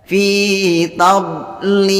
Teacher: membacanya itu bibirnya ditarik ke belakang, jangan sampai memunyung ke depan supaya bunyinya tidak tebal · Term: dibaca dengan tipis